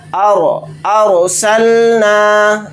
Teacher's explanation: یعنی رائے ساکنہ سے پہلے زبر آ گیا تو یہ رائے ساکنہ موٹی یعنی پر پڑھی جائے گی۔ ارسلنا، اس طرح سے را کو موٹا پڑھیں گے۔